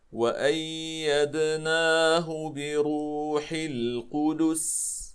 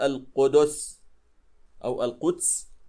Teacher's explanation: لاحظوا إخواني الكرام، سنقف هنا على السين، وقبل السين الدال مضمومة فلا بد لنا، وكذلك القاف فلا بد لنا من إتمام حركة الضم، ثم ننتقل إلى السين ونعطيها حقها من الصفير والهمس والرخاوة.